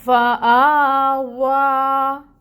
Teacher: ہم نے اس مد کو اب 2 حرکت کے برابر واو کو لمبا کھینچنا ہے۔ واو کے لیے اپنے ہونٹوں کو اچھے سے راؤنڈ بھی کرنا ہے۔ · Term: کھڑی مد